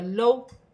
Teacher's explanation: واو ساکن سے پہلے زبر ہے، واولن بنے گی، اسے کھینچا نہیں جائے گا